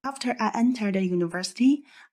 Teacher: It's choppy, as in the breath starts and stops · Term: breath issues